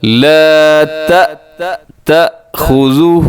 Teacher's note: یہاں حمزہ ہے، حمزہ کی وجہ سے جھٹکا لگ رہا ہے